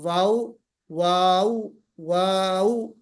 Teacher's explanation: जब हम वाव निकालते हैं तो वाव निकालते वक्त हमारा मुंह गोल होना चाहिए